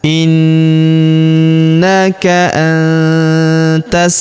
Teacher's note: Perhatikan huruf nun sukun bertemu huruf ta, maka nun sukunnya melebur ke huruf ta. Kita baca dengung dan samar. Dengungnya kita tahan dua sampai 3 harakat.